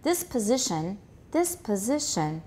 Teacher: there is a gentle continuation rise